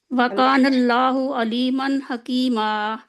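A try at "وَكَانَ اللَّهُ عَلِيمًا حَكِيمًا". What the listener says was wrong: आइन पढ़े ना, हमजा नहीं। ओके, वकानल्लाहु अलीमन हकीमा।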